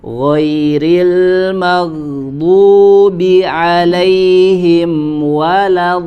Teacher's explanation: Ketika tasydid di huruf do, ya, otomatis sudah menjadi tebal karena dia sudah masuk ke huruf do. Tapi ketika lamnya harokat fathahnya masih dibaca tipis, tidak langsung terpengaruh menjadi tebal seperti huruf dod.